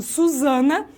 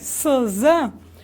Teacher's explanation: Esses fricativos são sibilantes, porque a língua ela faz uma curva de maneira a conduzir o som, para conduzir esse ar para a ponta dos dentes, para a ponta dos dentes. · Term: fonemas fricativos